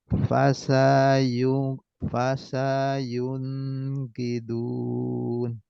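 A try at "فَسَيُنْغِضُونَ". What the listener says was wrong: Fasayun riduna. Yun, nunnya jangan ditahan. Fasayun langsung ke gi. Fasayun riduna. Ginya pendek. Fasayun riduna.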